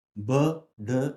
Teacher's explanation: ബ, ഡ എന്ന് പറയുമ്പോൾ ഈ വോക്കൽ കോർഡ്സിൻ്റെ ഒരു വൈബ്രേഷൻ നമുക്ക് ഈ ത്രോട്ടിൽ ഫീൽ ചെയ്യാൻ പറ്റും. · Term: വോയിസ്ഡ് കോൺസണൻസ്